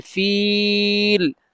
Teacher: كيف فعل ربك بأصحاب، خرج জবর এখানে লম্বা হবে, বিল ফিল, ফিল হবে মধ্যে আরজি, কারণ জেরের পরে ইয়া সাকিন, তারপরে করে ওয়াকফের কারণে সাকিন, মধ্যে আরজি, তিন আলিফ লম্বা হবে